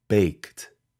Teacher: pay attention to the ed ending after a k it forms a t sound